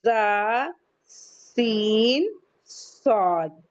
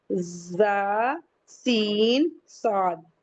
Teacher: तीन हुरूफ में सीटी की आवाज आती है कैसे जा सीन स्वाद जब इनको हम बोलेंगे तो हमारे माउथ से एक सीटी की आवाज निकलेगी।